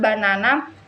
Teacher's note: in the word banana, the second syllable is stressed